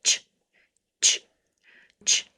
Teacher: So I'm stopping the airflow with the T, touching the top of the mouth and holding a lot of pressure. And then when I release the pressure, my tongue comes down a little bit